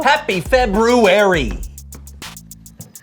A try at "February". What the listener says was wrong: I know there's an R there but most people don't pronounce it